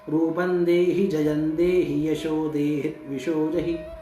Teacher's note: शुद्ध बात यह है कि सब जगह पे इकार का उच्चारण ह्रस्व है, इकार का उच्चारण छोटा है। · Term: ह्रस्व ई